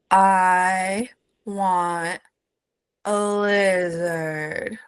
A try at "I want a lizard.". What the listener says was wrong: That was so good. You got your tongue up.